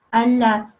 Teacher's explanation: So your tongue is in between top and bottom teeth, and that's how you say it.